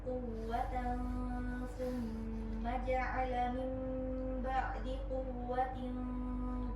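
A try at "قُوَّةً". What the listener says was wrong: Kurang tebal. Tinggikan sudah.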